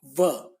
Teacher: निचले होठ और ऊपर के दांतों से आपका संपर्क होता है। जैसे व बोलते समय आपका निचला होठ ऊपर के दांतों से टच करता है। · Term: दंतोष्ठ